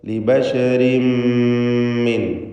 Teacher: ലിബശരിൻ ഇതിലുള്ള തൻവീനിന് ശേഷമുള്ള മീമിൽ പൂർണ്ണമായും ലയിപ്പിച്ച് മണിച്ചുകൊണ്ട് ഇദ്ഗാം ബിഗുന്ന കാമിൽ നൽകി ഉച്ചരിക്കുക. ലിബശരിൻ മിൻ എന്ന് പൂർണ്ണമായും ഷദ്ദുള്ള മീമാക്കി മാറ്റി മണിച്ചുച്ചരിക്കണം. മിൻ ഖബ്ലിക സാക്കിനതായ നൂനിന് ഇഖ്ഫാ ഹഖീഖി നൽകി മറച്ചു മണിക്കണം.